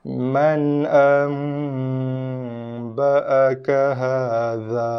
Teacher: bacaan nun mati sudah pun ditukar kepada bacaan mim mati berserta dengan dengung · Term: hukum iklab